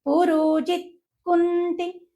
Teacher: ఈ రెండు సంయుక్త అక్షరాలే కాబట్టి దాని ముందు ఉండేటువంటి అక్షరాల పైన కచ్చితంగా అఘాతం పడుతుంది